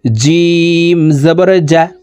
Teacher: জিম হরফ জিহ্বার মধ্যখান থেকে পড়তে হবে